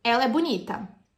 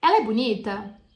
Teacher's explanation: No português, você pode ter a mesma frase com entonações diferentes, ela é uma afirmativa ou uma pergunta. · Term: entonação